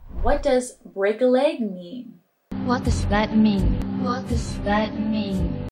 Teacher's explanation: listen for the falling intonation in what does that mean you can hear it when you say the word mean